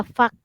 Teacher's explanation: huruf kaf nih dia ada satu sifat dia sifat hamas. Dia macam ada angin-angin kalau kita cakap.